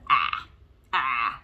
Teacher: see how much my mouth has to open in order to say ah that's because my tongue has to go way down low